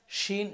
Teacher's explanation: শিনের উচ্চারণটা হবে আওয়াজ ছড়াবে, এটা হচ্ছে তাফাসসির হরফ, আওয়াজ ছড়াবে।